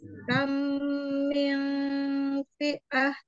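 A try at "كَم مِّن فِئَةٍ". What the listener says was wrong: Panjangkan lagi. Mim ya, mim sukun tadi ketemu dengan mim itu dipanjangkan ya. Kam mil fi'atin at ya.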